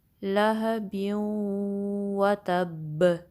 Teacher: لہبیوں، و، تا پہ فتحہ ہے، تاکہ تا کو با سے ملائیں گے، پریشر دیں گے، نبر ہوگا، کلکلا بھی ہوگا۔